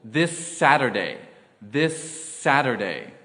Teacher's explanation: Here we hold the S sound a little longer without pausing between words.